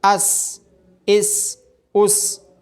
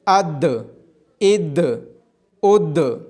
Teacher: سین حروف قلقلہ میں سے نہیں ہے تو اس کی آواز ٹکرا کے واپس نہیں آئے گی